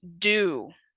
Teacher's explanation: D is the voiced alveolar stop, such as in do.